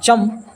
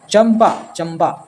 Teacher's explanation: चंपा में चन का उच्चारण चम है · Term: पंचम वर्ण